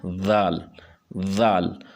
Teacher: اب ذال اور زا میں فرق ہے۔ ذال میں کی جو آواز ہے، سیٹی کی آواز، یہ نہیں ہوتی، یہ زبان کو اوپر والے دانتوں کے ساتھ لگا کے اور ذال ادا ہوتی ہے